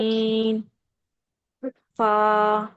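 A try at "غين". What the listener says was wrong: गैन को आपने heavy नहीं किया। गैन इज हैवी लेटर, इसको मोटा कीजिए। गैन।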